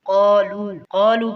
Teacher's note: لام پیش واو لو اسے ایک الف کے برابر کھینچیں گے.